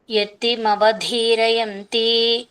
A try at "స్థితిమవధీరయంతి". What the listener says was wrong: స్థితిమవధీరయంతి. యతి ఉందా అక్కడ? మీరు వేరే చెప్తున్నారే.